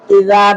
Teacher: প্রথম ইযা নরম, এক আলিফ টান